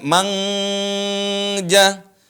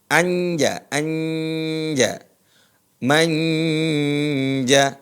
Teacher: Persis huruf nun itu diarahkan ke makhraj huruf jim.